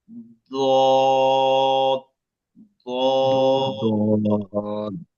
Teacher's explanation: জিহ্বার গোড়ার কিনারা, উপরের মাড়ির দাঁতের গোড়ার সঙ্গে। জিহ্বার 2টা কিনারা আছে গোড়াতে, হ্যাঁ, 2টা সাইড।